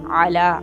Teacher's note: حمزہ نہیں پڑھنا، عین کو، اعلیٰ عین کی آواز نکال